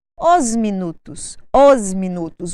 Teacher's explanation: Nós damos a sonoridade de Z ao S e ligamos, fazemos um link entre o artigo no plural e o próximo substantivo.